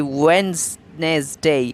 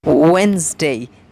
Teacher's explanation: It is D silent word. The D after the E is silent and makes it Wednesday. It's disyllabic.